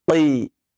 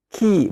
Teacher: Huruf qaf berbeda dengan kaf. Jika qaf dengan qalqalah ketika sukunnya, maka kaf tidak qalqalah, tetapi adalah hams.